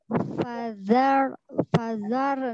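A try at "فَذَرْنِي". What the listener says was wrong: Jangan pelit huruf ra.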